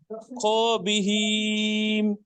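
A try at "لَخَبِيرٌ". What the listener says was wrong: লা খবির, শেষে র উচ্চারণ করেন, লা খবির। হ্যাঁ আজকাল একটু ভুল হয়েছে, ইয়াওমা ইজিন এখানে একটু ভুল আছে, বিহিম বাহুম হয়ে যাচ্ছে, ওগুলো পড়তে পড়তে আসবে।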